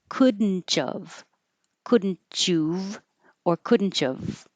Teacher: So the T and the Y next to each other can make a cha, and you can keep this a oo, oov, or you can even make it a of.